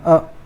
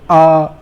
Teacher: अ कम समय लगा, इससे तो आ डबल समय लगा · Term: दीर्घ स्वर